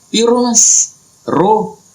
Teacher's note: Itu Berbeda dengan orang Jawa. Orang Jawa itu ya kalau dia ngomong selalu tebal kalau ro